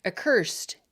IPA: əkɝst